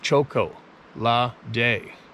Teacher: drop the t sound and add the word day